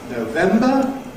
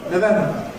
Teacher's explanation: Certain months equally show variable weakening in the first syllable.